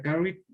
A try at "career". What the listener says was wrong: Career. Acuérdense de hacerle la I un poquito más larga, ¿no? Career.